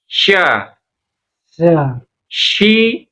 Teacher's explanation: Jadi tengah lidah kita naikin ke langit-langit. Tempelin. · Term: shin